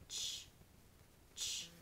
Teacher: It's a stop plus a fricative. So you're going to have the characteristic of a stop and then that affricate or that aperiodic wave that shows up.